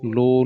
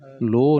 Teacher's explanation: ਲੋਅ ਨੂੰ ਲਮਕਾ ਕੇ ਕਹਿਣਾ ਹੈ ਲੋਹ ਨਹੀਂ ਕਹਿਣਾ